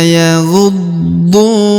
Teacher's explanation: huruf du dipanjangkan dua harakat karena di depannya terdapat wau sukun